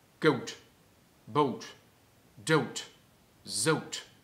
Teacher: das lange O im Plattdeutschen wird auch quasi einen Schritt weiter gedunkelt. Das A zu O und das O zu O. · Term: plattdeutsche O